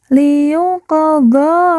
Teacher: Perhatikan liuq qaf sukun kita baca pantul karena qaf sukun merupakan salah satu dari huruf pantul atau huruf qalqalah